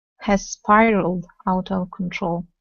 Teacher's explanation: You want to connect the two S sounds.